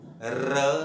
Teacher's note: र सीधा नोट करें, मूर्धा पर टच हो रहा है